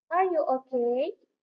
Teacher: The word okay, we use rising intonation because the sentence indicates yes or no question.